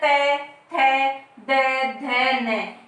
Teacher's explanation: इनका उच्चारण करते समय हमारी जीभ कहाँ पे स्पर्श करती है? दांतों पे स्पर्श करती है।